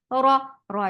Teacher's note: Ra is heavy for fatha open jaws. The sound is short.